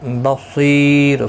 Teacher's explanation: صاد حروف مستعلیہ ہے، پر پڑھا جائے گا، سی یا مدہ ہے، ایک الف کی مقدار کے برابر کھینچ کر پڑھیں گے